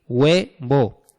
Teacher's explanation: Tenemos dos vocales que se pronuncian en el mismo golpe de voz, hue. ¿Y cómo pueden ser? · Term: diptongo